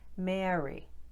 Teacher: This feminine first name has that sound we covered earlier in the video, the eh with the off glide